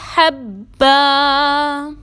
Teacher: حبا میں دو زبر کی تنوین کو ایک زبر اور الف سے بدل دیں گے